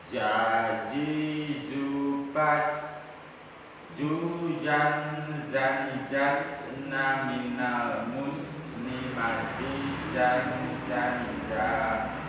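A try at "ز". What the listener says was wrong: Oke, bapaknya ini hurufnya yang awal benar kan? Zazizu baz. Nah pas baz itu jadinya jim. Baz. Nah harusnya gitu. Baz. Tapi tadi salah. Berarti jim. Nah itu kurang konsisten. Karena ada yang benar, ada yang keliru juga.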